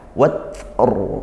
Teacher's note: Sebelum huruf sukunnya ada harokat fathah, watr, nah, sehingga ro-nya dibaca tebal, pangkal lidahnya dinaikkan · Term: tafkhim